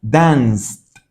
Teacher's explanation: esta ed la pronuncio como una T y me queda danced. Tengo que, tal vez puede ser un poco complicado al principio, juntar esta consonante con esta consonante porque no estamos acostumbrados a hacer eso en español.